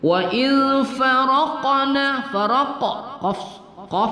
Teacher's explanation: qaf berbaris sukun, kita qalqalahkan pada qalqalah sughra